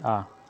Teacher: मध्य स्वर जीव के मध्य भाग के सहयोग से इसका उच्चारण होता है